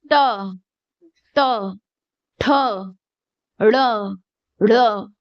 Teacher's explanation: जो जीभ है अपनी, वो कैसी ऊपर टच होके फिर नीचे टच हो रही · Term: मूर्धन्य वर्ण